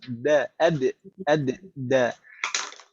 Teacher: kalau huruf dal itu ujung lidah nempel ke gigi seri atas.